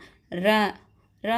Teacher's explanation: நாவின் நுனி மேல் அன்னத்தின் முதல் பகுதியை தொட்டு வருடுவதால் ரகரம் தோன்றுகிறது. இது இடையின எழுத்து என்பதால் இதனை இடையின ரகரம் அப்படின்னு சொல்றாங்க.